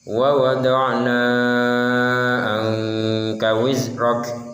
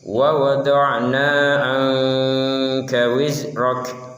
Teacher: jangan terlalu panjang mengucapkan kata wa wada'na, karena wa wada'na di sini bertemu dengan huruf ain, bukan huruf hamzah.